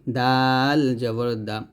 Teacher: জবর দালটা কিন্তু জিহ্বার আগা সামনের উপরে দুই দাঁতের গোড়ায় লাগবে দাল হচ্ছে জিহ্বার আগা সামনের উপরে দুই দাঁতের গোড়ায় লাগিয়ে দাল পাতলা উচ্চারণ করতে হবে · আর দালটা কিন্তু জিব্বার আগা সামনের উপরে দুই দাঁতের আগায় গোড়ায় লাগবে। দাল হচ্ছে জিব্বার আগা সামনের উপরে দুই দাঁতের গোড়ায় লাগে